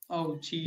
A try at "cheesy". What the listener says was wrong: Cheesy. Cheesy. Not Z. S-Y.